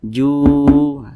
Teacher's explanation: Mad Thobi'i panjangnya dua harakat atau kira-kira dua ketukan